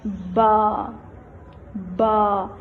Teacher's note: دونوں ہونٹوں کے ملنے سے با ادا ہوتا ہے، با، با۔ تختی اول میں ہم اس کو با پرناؤنس کریں گے، با، الف، با، با، لیکن اس کی ساؤنڈ ہوگی ب، جیسے اب، ب، اب۔